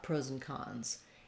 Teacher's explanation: It becomes more of a reduced vowel, pros and cons. So I'm kind of going right to my n sound and then back to my ah sound